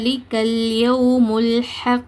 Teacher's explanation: next லிக்கல்யமுல்ஹ இங்க ல் இருக்குது சோ நுனினாக்கு மேற்பற்களோட கீழ் ஓரங்களை தொடுவதன் மூலமாக ல் உச்சரிக்கப்படும்